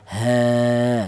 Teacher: Kemudian huruf kedua ada alif ini atau di balik ada alif yang dialu huruf yang berharakat fathah ini dibaca mad tha thobi'i. Panjangnya mad thobi'i yaitu satu alif atau dua harakat atau dua ketukan ya.